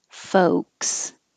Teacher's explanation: forget about that L. Just skip it and say folks.